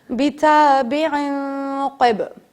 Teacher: این نہیں پڑھنا ہے بلکہ نون کو چھپا دینا ہے۔ بِتَابِعٍ قِب، اب یہاں پہ دیکھیں قلقلہ کیا، بِتَابِعٍ قِبْلَتَهُمْ۔